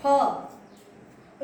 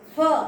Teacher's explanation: ये नीचे वाले होंठ जो है वो दांतों से लगेंगे